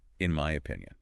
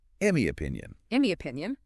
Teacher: the n Sound yeah at the end of it it's kind of influenced by that M sound okay it's coming right after it so they're morphing who are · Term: assimilation